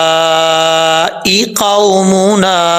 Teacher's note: مد منفصل کی مقدار جو ہے وہ 2.5 الف کے برابر ہوتی ہے، اس کو 2.5 الف کے برابر لمبا کر کے پڑھ سکتے ہیں۔